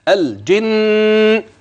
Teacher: النون الاولى اللسان طرف اللسان سيكون في الحنك الاعلى ملتصق التصاق تام الجن هكذا اما الثانيه فطرف اللسان يتجافى يعني يبعد عن الحنك